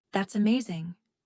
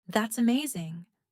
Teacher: Rising, excited, that's amazing. Falling, calm, maybe sarcastic. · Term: Intonation also shows emotion